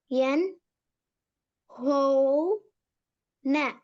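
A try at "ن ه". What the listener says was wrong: ஹா வரக்கூடாது. ஹே. என் ஹவ்.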